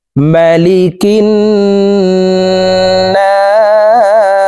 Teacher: না 3 আলিফ টেনে সিনকে সাকিন করে ফেলবো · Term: মধ্যে আরজি